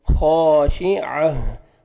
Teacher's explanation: यौमइज़िन खा, खा को मोटा करेंगे और अलिफ मद्दा, अलिफ से पहले ज़बर है, खा को अपने 1 सेकंड खींचना है। खाशिअह, आइन को अपने सही मखरज से अदा करेंगे ताकि हमज़ा में आवाज़ मिक्स ना हो। आइन को आपने हा के साथ मिलाना है, ता को हमें चेंज करेंगे और लास्ट में हा का साउंड आना चाहिए।